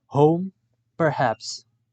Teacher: The description of h is voiceless glottal fricative.